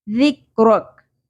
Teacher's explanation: لا کا نہیں پڑھنا, لَكَ, لَكَ. ذِكْرَكَ, ذال نرمی سے ادا کریں گے لیکن پر نہیں کرنا, باریک رکھنا ہے